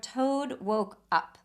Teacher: we have the o sound of woke although we have that plosive at the end there